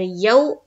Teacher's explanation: वाव साकिन से पहले जबर आए तो वाव लीन का कायदा बनता है, नरम आवाज के साथ हमें जल्द अदा करनी है